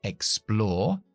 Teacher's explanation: Yo soy inglés británico, no pronuncio nunca R's después de vocales.